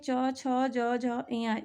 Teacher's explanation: जब ये वर्ण हम बोलते हैं च वर्ग को, तो ये जब हम बोलते हैं तो तालु से टच करता है फ्रेंड्स। ये ध्वनियाँ तालु से टच करते हुए मुंह के बाहर निकलता है।